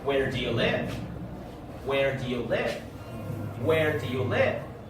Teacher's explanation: have you heard the falling intonation in the word live